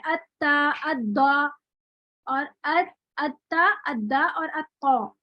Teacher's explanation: जबान की नोक आप देखें कहाँ लग रही है, ऊपर वाले दांतों के बिल्कुल जड़ पे लग रही है। फिर आप यही जबान की नोक इन दांतों के आगे जो किनारे हैं ना, टीयरिंग जो किनारे हैं, इनकी तरफ रख लें, तो ये किनारा कहेंगे इसको।